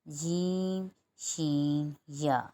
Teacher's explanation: जब जबान का दरमियानी हिस्सा तालू के दरमियानी हिस्से से लगेगा तो तीन हर्फ अदा होंगे